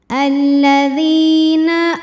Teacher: Maka cara membacanya huruf dzal ini kita panjangkan dua harokat saja. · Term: mad tabi'i